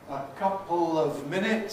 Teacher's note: syllabic L in couple, regularly followed by of, or still further weakened.